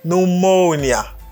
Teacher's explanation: Accent sous deuxième syllabe là.